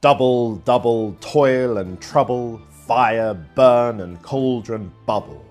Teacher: Another kind of foot is the 2-syllable long trochee, a stressed syllable followed by an unstressed one. The trochees in these lines from Shakespeare's Macbeth lend an ominous and spooky tone to the witch's chant.